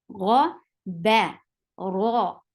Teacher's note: Make ghain heavy, ra heavy, but keep ba light.